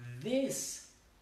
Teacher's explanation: la pronunciación de la TH, es con la lengua por debajo de los dientes. This, y vibra.